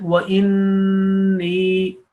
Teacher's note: this noon with the shadda sign, it demands a 2 counts gunna, nasal sound. And khiftul, when you make any mistake, anybody can do an error and a mistake, then you have to repeat the whole word.